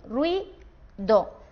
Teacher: Rui, como es un diptongo, va junto en esta sílaba y do sería la siguiente sílaba.